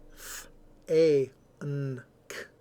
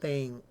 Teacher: The ng is the result of the influence of the K on the N. So the combination of the 2, of the N and the K, actually turns that N into an NG.